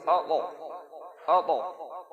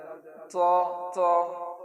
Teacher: طا پر جب جزم ہو تو اس کو قلقلہ کے ساتھ پڑھیں گے، یعنی آواز کو لوٹا کر کے پڑھیں گے. جب جزم ہوگا تو خوب اچھے سے آواز لوٹائیں گے، جیسے اطا اطا طا تو طی اطا.